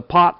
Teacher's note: the T at the end of the word pot doesn't have that same puff of air